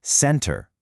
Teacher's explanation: with the stress clearly on the first syllable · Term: syllable stress